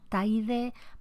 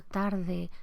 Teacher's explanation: algunas líquidas, la R y la L, en ese proceso de debilitamiento se pueden vocalizar